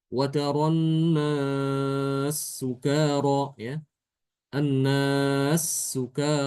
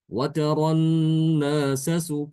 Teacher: Huruf sin yang kedua adalah dommah. Di sini untuk bacaan Imam suusi adalah dengan mengidghamkan sin yang pertama ini ke sin yang kedua. Setelah sin yang pertama itu dimatikan dulu ya, diganti dengan ee sukun. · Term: idgham kabir